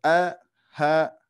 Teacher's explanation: huruf ain yang mana letaknya di tenggorokan tengah